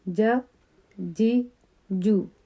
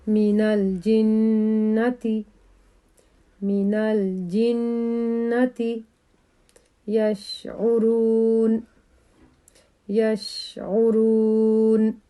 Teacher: تینوں حروف ایک ہی جگہ سے نکلتے ہیں، زبان کا درمیان اور اوپر کا تالو